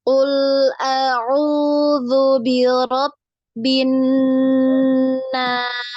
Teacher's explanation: Nun bertasydid diingat. Nun bertasydid ini wajib digunnah ya. Wajib digunnah.